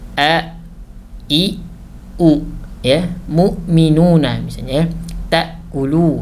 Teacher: Yang pertama sifatnya adalah syiddah. Ya, syiddah yakni tertahannya aliran suara. Artinya saat sukun, huruf hamzah itu tidak boleh mengalir suaranya.